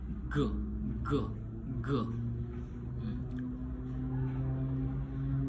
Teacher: Jadi penjelasannya itu place of articulation yaitu masuk di velar. Manner of articulationnya itu masuk di plosive. Dan voicing voice. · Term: voice velar plosive